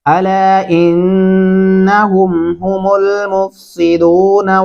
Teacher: الا اس کے اوپر دو الفی مدہ ہے